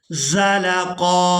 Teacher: जा की आवाज़ जो है ये सीटी की मिसल अदा की जाती है